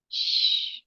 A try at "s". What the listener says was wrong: No, not just shh. Join your teeth, and like we say in our culture, like om, and it doesn't stop until unless it stop. So similarly, keep on continuing.